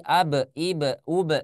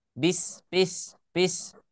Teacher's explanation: huruf ba itu makhrajnya di kedua bibir